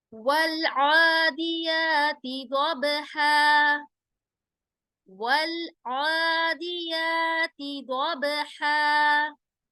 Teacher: کھڑے زبر کو ہم 2 الف کے برابر کھینچ کر اس کو پڑھتے ہیں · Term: کھڑا زبر